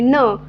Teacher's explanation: न अल्पप्राण आहे प्लस अनुनासिक आहे